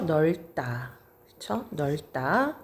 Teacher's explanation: 리을 비읍, 리을 시옷, 리을 티귿이 오게 될 경우에는 이렇게 리을로 발음이 됩니다. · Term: 자음이 탈락